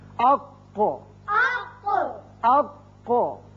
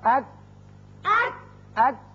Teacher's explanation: قاف پر کر کے پڑھتے ہیں، کاف ذرا ہٹ کر نیچے کی طرف سے نکلتا ہے اور باریک ہوتا ہے